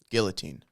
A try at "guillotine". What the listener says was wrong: You like throwing the L's in there. Guillotine. You like the L's. Guillotine. I think so. It's a French word, right?